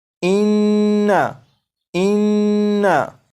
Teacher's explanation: गुन्ना जब करेंगे तो इसकी मिकदार 1 अलिफ के बराबर रखेंगे